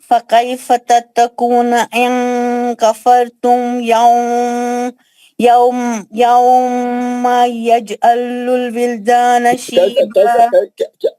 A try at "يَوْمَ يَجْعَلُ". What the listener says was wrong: یومن میں کیا خدا اپلائی کر رہے ہیں؟ کہاں کر رہے ہیں آپ مال گنا, ذرا صحیح پڑھ کے بتائیے پھر دوبارہ.